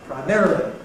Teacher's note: or perhaps [ praɪˈmærəli ] for some people, but anyhow stressed on the second syllable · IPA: praɪˈmerəli